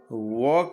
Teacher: वकारस्य दंतोष्ठम, व का दंत और ओष्ठ है, वह जो उच्चारण होता है केवल दांत से नहीं, दंत और ओष्ठ से होता है